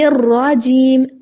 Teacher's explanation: را کو موٹا کرنا ہے، را کی آواز موٹی بھی ہو اور اس میں کپ کپاہٹ بھی ہو